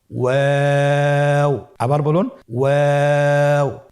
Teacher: 2 ঠোঁট গোল করে মাঝখানে ফাঁক রেখে হরফটি উচ্চারণ করতে হবে।